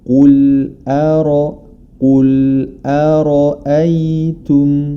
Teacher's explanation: jangan sampai hamzah di sebelum huruf ra atau setelahnya ikut menjadi tebal, karena huruf ra saja yang tebal